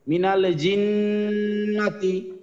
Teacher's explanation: নুনের উপরে তাসদিদ, তার আগে জিমের নিচে জের, সো ওয়াজিব গুন্না।